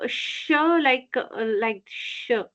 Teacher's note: It's a little bit like a whistle sound, we can say, like a sh. We make sh with lots of air. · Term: Ushma Vyanjana